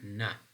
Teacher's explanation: when we're producing na again the air is coming out through nostril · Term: nasal sounds